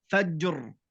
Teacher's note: عند الوقف الراء سكون، قبلها ساكن وهو حرف الجيم، قبله فتحة وهو حرف الفاء، فجر. فهنا الراء تكون مفخمة